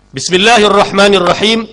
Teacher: Bismi sifat mahmus, dibaca berangin. Angin tu pasal apa? Pasal dia tidak berpegang kuat pada makhraj.